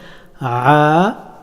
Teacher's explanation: আইন হরফটি এভাবে উচ্চারিত হয় আ গলার মধ্যস্থল থেকে